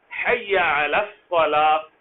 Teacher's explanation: حی، اس کو لمبا نہیں کیا جا سکتا، یا کے اوپر صرف زبر ہے. حی علی الصلاۃ، اس لام کو آپ لمبا ندا کے لیے کر سکتے ہیں.